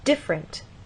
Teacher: they'll say different, stress on the first syllable